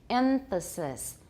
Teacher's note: a labiodental nasal may occur